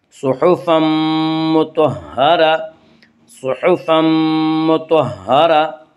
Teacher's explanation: صحفا مطہرہ، طا کو پر پڑھیں گے، طا حروف مستعلیہ میں سے حروف مستعلیہ 7 ہیں جن کا مجموعہ خص ضغط قز ہے، یعنی خا صاد ضاد غین طا قاف ظا، یہ حروف ہمیشہ ہر حال میں پر پڑھے جاتے ہیں۔